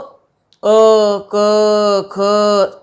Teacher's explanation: वायु सीधे गले से निकल करके बाहर आ जा रही है, कहीं भी किसी भी अंग से वह स्पर्श नहीं कर रही है। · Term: कंठ ध्वनि